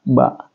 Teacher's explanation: Ba adalah asyafatain atau keluar di 2 bibir